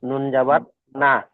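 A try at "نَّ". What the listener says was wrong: নুন, নুন জবর না হয় না, নুন নুন জবর নান। নান, ডবল নুন। নুন নুন জবর নান। আর নানটা আবার গণনা করতে হবে, কানান। নুন আলিফ জবর না।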